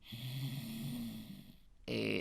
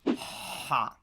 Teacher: lo que hago literalmente es presionar la raíz de mi lengua contra mi orofaringe. Cierro el espacio y simplemente expulso el aire. Entonces, este fue un ejemplo de una consonante faríngea, específicamente faríngea fricativa sorda, ¿no?